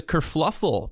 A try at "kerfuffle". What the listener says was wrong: Did you say fluffle? There's no L in there, or no, it's first L. Fuffle? Kerfuffle. It's not kerfluffle.